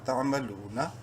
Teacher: واو مدہ ہے، لام کو ایک الف کے برابر لمبا کریں گے